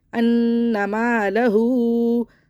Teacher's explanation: الٹے پیش کو ہم 3 الف برابر کھینچ لیں گے کیونکہ یہاں پہ مد متصل بن رہی ہے، یعنی کہ الٹے